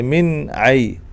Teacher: اور اسی طرح آپ اس کو دیکھیں، دو نون ساکن ہے، نون ساکن کے فوراً بعد حروف حلقی میں سے عین آ رہا ہے، تو من آئی، من آئی، من آئی نہیں پڑھیں گے، غنہ نہیں کریں گے، من آئی، یعنی غنہ مطلب ناک میں آواز لے جا کر نہیں پڑھیں گے، سیدھا پڑھیں گے